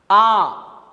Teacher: आ ये दीर्घ है क्योंकि इसके लिए इसे दोगुना समय लगता है